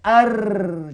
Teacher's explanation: hujung lidah dia melencong ke belakang